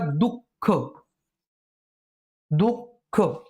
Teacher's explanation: विसर्गाचा उच्चार त्याच्या मागील स्वरा मागोमाग हकारयुक्त होतो · आपल्या विसर्गाचा उच्चार करताना थोडासा हया वर्णाला आपण झटका देऊन त्याचा उच्चार करत असतो